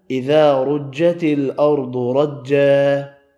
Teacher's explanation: الف مدہ ایک الف کی مقدار میں کھینچ کر پڑھا ، را پیش کی وجہ سے پر پڑھا، یہ را ساکن · ضاد حروف مستعلیہ ہے اس لیے پر پڑھا